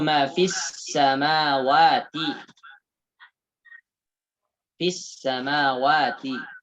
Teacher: Alif lam syamsiyah. Lam tidak dibaca jelas, tapi dileburkan.